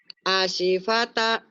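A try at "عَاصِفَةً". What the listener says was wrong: A-nya panjang. Asifata. Asifata.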